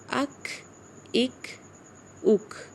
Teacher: کاف اک اک اک، اسے حمز کہتے ہیں۔ جب ہم کاف کی آواز نکالتے ہیں تو سانس جاری رہتا ہے